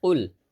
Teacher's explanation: জিব্বার গোড়া তার বরাবর উপরের তালুর সঙ্গে লাগবে, জিব্বার গোড়া তার বরাবর উপরের তালুর সঙ্গে লাগবে। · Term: কফ